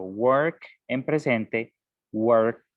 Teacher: Entonces, lo que nos dice la regla, el caso número 1, es que cuando hay un verbo terminando en un sonido que es voiceless, como k, el pasado se va a pronunciar como el sonido t. Entonces, yo digo work en presente, worked en pasada.